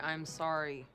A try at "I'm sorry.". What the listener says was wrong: No, be sincere. Like this. I'm sorry.